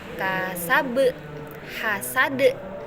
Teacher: Yang kedua, qalqalah kubra. Qalqalah yang dipantulkan karena adanya waqaf.